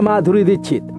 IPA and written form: maːdʱuːɾi d̪iːkʃɪt̪ (Madhuri Dixit)